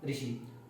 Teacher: मूर्धा से उच्चारित होने वाला स्वर जो है वो है ऋषि।